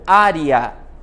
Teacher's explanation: Eu posso dividir essa sílaba assim, a, re, a, separar o E do A, formando um hiato. aí seria uma proparoxítona.